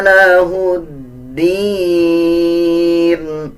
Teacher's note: ہا کو دال کے ساتھ ملا کے پڑھا جائے گا